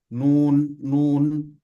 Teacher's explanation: makhrajnya berada di ujung lidah di bagian gusi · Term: nun sukun